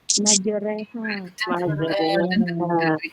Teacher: antara fatha dan kasrah jadi bunyinya e ya iya jadi bunyinya kayak e gitu jadi majere karena di riwayat lain bukan hanya majereha ya e waduh jadi ke e ya waduhe a re k e re re re re re re re re re no jadi kayak e gitu imalah itu ya.